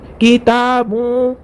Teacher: نون کی آواز کو ناک میں چھپا کر پڑھیں گے